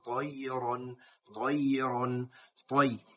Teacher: ইয়া নরম হবে, ত বলার সময় মোটা হবে, ইয়াটা পাতলা হরফ, ইয়া নরম হরফ।